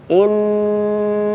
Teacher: Nun tasydidnya ditahan dulu. Innaha, jangan tergesa-gesa.